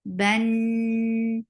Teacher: Noon will get sifa of gunna, and this is akmal gunna, so give nice time here.